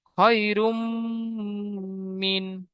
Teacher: রয়ের উপর দুপেশ তানবিন এসেছে, তানবিনের পরে ইউমিন থেকে মিম এসেছে, তাই তানবিনকে মিমের সাথে মিলিয়ে এক আলিফ পরিমাণ গুণনা করে পড়তে হবে। মিমের উপর তাইদিদ এসেছে, তাইদিদ ওয়ালা অক্ষরে দুবার পড়তে হয়, একবার ডান দিকের অক্ষরের সাথে মিলিয়ে, একবার নিজে নিজে। · মিমের উপর তাইদিদ এসেছে, তাইদিদ ওয়ালা অক্ষরে দুবার পড়তে হয়, একবার ডান দিকের অক্ষরের সাথে মিলিয়ে, একবার নিজে নিজে। তাসদিদ মিমের উপর আসার কারণে গুণনা করা অজীব, তাই একালি গুণনা করে পড়তে হবে। মিমের উপর তাসদিদ এসে তাইদিদ অক্ষরে দুবার পড়তে, মিমের নিচে জের এসেছে, যেটি হলো হারাকাত, হারাকাতে তাড়াতাড়ি পড়তে হয়, টান দেওয়া নিষেধ।